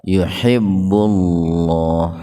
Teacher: Nah, tafhim lafdzul jalalah atau lebih spesifiknya huruf lam didahului domah. Jadi lamnya atau lafaz Allahnya dibaca tebal ya, tafhim.